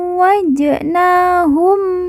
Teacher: wa yang bertahjid kita baca ditekan dan ditahan dua harakat [Musik] Jim sukun atau Jim mati kita baca pantul karena merupakan huruf Qalqalah